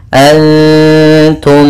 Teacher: Kemudian antum ada bacaan ikhfa hakiki, yaitu bacaan samar antara bacaan menyamarkan suara nun kepada huruf ta